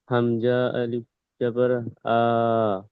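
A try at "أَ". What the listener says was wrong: হামজা আলিফ জবর বললেন, হামজার তো আলিফকে তো হামজা বলে দিচ্ছি, আর তারপরে কি আবার আলিফ এসছে? শুধুমাত্র হামজা জবর আ পড়ে দিচ্ছি, তো আবার হামজার পরে আলিফ নিয়ে আসবো কেন? হ্যাঁ, আলিফকে তো আমরা হামজা বলে দিচ্ছি, আলিফের উপরে জাবা চলে এসেছে,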